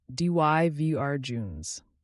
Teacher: 3 syllables with the stress on the second one. So slowly it's dijuns.